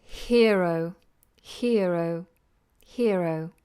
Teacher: because it's following with a vowel sound, we have a sounded R